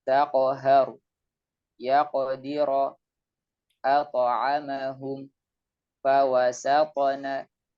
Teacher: pantulannya juga tebal dan menyerupai huruf o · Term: qalqalah